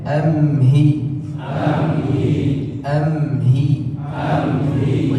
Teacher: Amhilhum di sini maka ada gunnahnya, ada dengungnya, ditahan sejenak baru kemudian masuk ke huruf ha tanpa diputus suaranya. Bukan amhilhum tapi amhi, amhi, tahan sebentar.